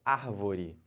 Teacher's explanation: A antepenúltima sílaba é a mais forte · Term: proparoxítona